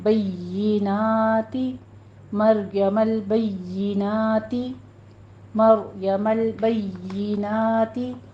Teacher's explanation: یا کی آواز کسرہ کے ساتھ باریک کیجئے اور یا پہ تشدید بھی ادا کرنی ہے